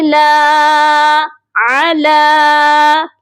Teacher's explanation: لام کو ایک الف کے برابر لمبا کریں گے کیونکہ لام کے اوپر کھڑی زبر ہے